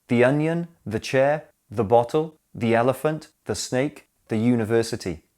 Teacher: the stress is on the noun, not the article.